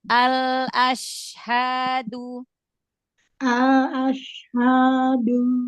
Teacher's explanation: Shinnya di tengah lidah lagi.